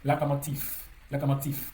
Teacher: le V qui se situe en fin de mot va s'assourdir pour devenir F